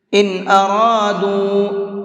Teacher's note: تو نون ساکن کے بعد میں اظہار کے حرفوں میں سے کوئی بھی حرف آتا ہے تو اس نون کو صاف صاف پڑھتے ہیں، جلدی پڑھتے ہیں · ان ارادوا، اس طرح سے، اور را کو منہ بھر کے پڑھیں گے، اور دال کو تھوڑا سا زیادہ کھینچ کر کے پڑھیں گے، کیونکہ یہاں پر یہ چھوٹا مد بنا ہوا ہے